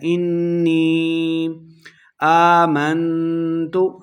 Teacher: انی نون مشدد ہے، غنہ کریں گے